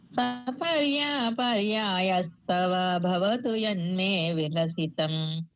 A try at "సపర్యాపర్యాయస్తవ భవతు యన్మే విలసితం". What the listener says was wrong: చాలా బాగా చెప్పారండి,